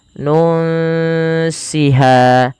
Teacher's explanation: Nah, ada huruf nun mati ketemu dengan huruf sin sebagaimana yang tadi. Ini sama kita baca dengan bacaan ikhfa, yaitu disamarkan bunyi nunnya kepada huruf sin.